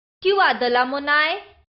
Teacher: the questioning is shown in the tone of voice which rises on the last syllables